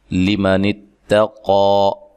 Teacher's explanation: تا کو باریک پڑھنا ہے اور قاف کو موٹا ادا کرنا ہے، ایک الف کی مقدار کے برابر اس کو پڑھنا ہے.